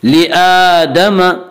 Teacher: वइज़ क़ुलना लिल मलाइकति इसजुदू लिआदम, लिआदम हमज़ा के ऊपर खड़ा ज़बर है, खड़ा ज़बर को एक अलिफ के बराबर खींच कर पढ़ेंगे